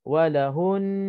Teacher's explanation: Dia nak panjang 2 harakat itu nun mati, bukannya hu, bukannya huruf yang sebelum nun mati. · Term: nun musyaddad